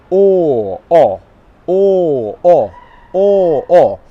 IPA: ɔː